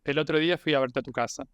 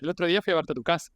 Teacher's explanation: Sometimes I think that the Argentinian intonation is more plain or it's more flat.